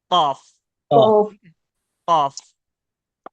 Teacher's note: जबान की पिछली जड़ और सॉफ्ट प्लेट से क्या अदा होता है? काफ अदा होता है।